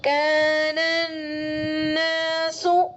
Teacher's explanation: الف لام کے بعد نون مشدد ہے تو غنہ بھی ہوگا